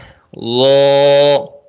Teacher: ضو کا مخرج ہے زبان کا سرا اوپر کے دانتوں کے اندرونی کنارے سے